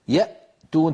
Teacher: تجدون بأن الصوت قد انقفل تماما عند الهمزة